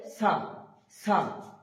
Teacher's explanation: সা বলার সময় আমরা মনে রাখবো সাটা হালকা তুতলা টাইপের হবে, যেমন তোতারও একটু তোতলা টাইপের, তা যেমন স্পষ্ট হচ্ছে তেমন হবে না, সা একটু তুতলা হবে, জিভটা সামনের দিকে একটু বেরিয়ে আসবে দাঁতের সামনে, যেমনটা এখানে লেখা আছে। সা উচ্চারণ হবে জিভের আগার দিক থেকে উচ্চারণ হবে, এবং জিভটা দাঁতের উপরে হালকা বেরিয়ে আসবে